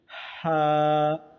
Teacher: हा का मखरज हलक के दरमियाने हिस्सा है